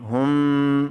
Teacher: دو چشمی ہا ہے یہ، اس کو بھاری آواز سے پڑھتے ہیں، سینے میں دھمک آتی ہے جب یہ ادا کی جاتی ہے